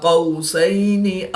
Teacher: الف سے پہلے قاف پر ہے تو الف کو پر پڑھیں گے، اور یہاں پر الف سے پہلے حرف پر زبر ہے تو الف مدہ ہوگا، ایک الف یعنی 2 حرکات کے برابر کھینچ کر پڑھیں گے۔ واو ساکن سے پہلے قاف پر زبر ہے تو واو لین ہوگا، اس کو لمبا نہیں کریں گے